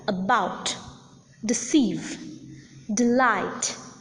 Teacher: For instance, in the words like about, deceive, delight, the second syllable is accented. The first syllable is unaccented, unstressed.